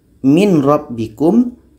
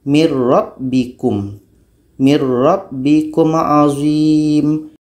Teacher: bunyi nun mati ini masuk kepada roh · Contoh yang kedua, dalam surah Al-Baqarah ayat 49, huruf pertama adalah nun, huruf yang kedua ro. Jadi bunyi nun mati ini masuk kepada ro. Kalau kita baca min rabbikum, itu belum masuk secara sempurna. · Tapi kalau kita masukkan bunyi nun kepada ro, mir rabbikum, mir rabbikum azim, bunyi nun sudah masuk kepada ro, maka itu disebut dengan idgham kamil. Nun mati bertemu ro hukumnya adalah idgham bila gunnah, tapi ketika proses membacanya hukumnya adalah idgham kamil.